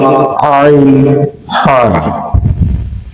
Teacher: দুই নাম্বার মাখরাজ হলকের মধ্যখান হতে উচ্চারিত হয়